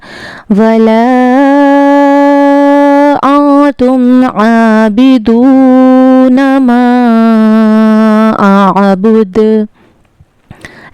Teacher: आद में आइन के मखरज का ख्याल रखना है और दाल पर कलकला होगा।